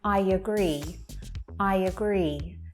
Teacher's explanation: there are two vowel sounds there to link them together and to make it flow more naturally · It's ever so subtle, but there is that y sound there to connect the words together. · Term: intruding y sound